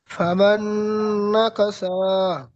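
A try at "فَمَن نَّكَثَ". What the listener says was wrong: নাকা সা কেন টান দিচ্ছেন?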